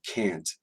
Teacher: when we say can't we usually keep that vowel uh as a as the pure original vowel and not reduce